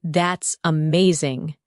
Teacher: When you say, That's amazing, your tone rises with excitement.